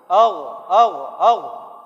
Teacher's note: Al, di tenggorokan paling atas. Itulah dia makhrajnya.